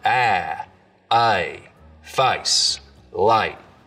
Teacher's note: So the diphthong in face starts real low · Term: face lowering